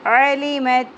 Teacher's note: عین کو وسط حلق سے نکالنا ہے